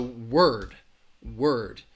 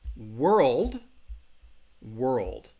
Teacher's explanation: the RL is a tricky combination because again your tongue when you're saying the R sound your tongue is in the middle of your mouth and then you're gonna transition a little upward for that L